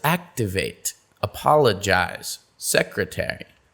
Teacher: for these the stress comes two syllables before the suffix